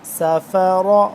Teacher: را زبر را، سافارا، را کو پر کر کے موٹا کر کے پڑھیں گے